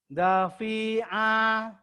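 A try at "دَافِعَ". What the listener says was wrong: Danya panjang.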